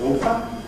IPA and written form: ˈɔːfə (author)